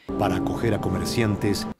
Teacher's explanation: para acoger a comerciantes, La A final de para se fusionó con la A de acoger y la R de acoger se fusionó con A.